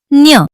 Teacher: न्य हे च वर्गातील अनुनासिक आहे. याचा उच्चार नाकातून य किंवा न्य असा होतो.